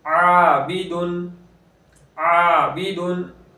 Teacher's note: आबिदुन, आबिदुन, अलिफ मद्दा हो रहा है, ऐन बारीक है तो अलिफ को भी बारीक पढ़ेंगे